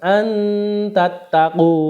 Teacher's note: Untuk contohnya, ya, ada nun sukun bertemu dengan ta, antattaqu, bacanya samar-samar masuk ke huruf ta, antattaqu. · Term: ikhfa